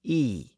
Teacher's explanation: the sound of letter Y had merged with the sound of letter I and they were both pronounced as e